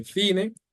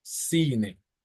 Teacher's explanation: Same thing with Spain, before the C or the I, they pronounce it like a TH. Latin America, they pronounce it like a S. So they won't say cine, they'll say cine.